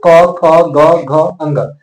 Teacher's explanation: क वर्ग का उच्चारण किससे होता है कंठ से